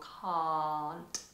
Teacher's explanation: standard British English open and long